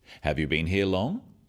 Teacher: Questions that start with have you are yes-no questions, so they have a rising tone.